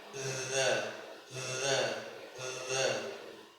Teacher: tempat keluarnya huruf dza itu ujung lidah menyentuh ujung gigi seri atas menyentuhnya sangat ringan, tidak terlalu ya tidak terlalu nempel sekali.